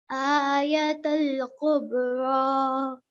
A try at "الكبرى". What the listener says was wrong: Now this kaf is a thin sound, so try not to make that qaf sound, okay? Kubra.